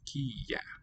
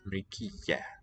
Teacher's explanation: that final ya has a doubling sign above it, so it's a long Y sound